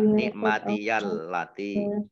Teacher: harusnya nikmati, tapi karena bersambung dengan huruf berikutnya maka menjadi diberi harokat fathah